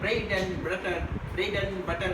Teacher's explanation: it becomes an and d is lost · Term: weak forms